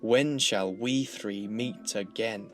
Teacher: this is what we call trochaic verse, made up of pairs of trochees rather than iambs, which are pairs of stressed then unstressed syllables.